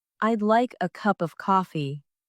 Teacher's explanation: stress falls on like, cup, and coffee. It sounds like, I'd like a cup of coffee.